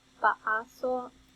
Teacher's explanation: A is articulated with a fairly flat tongue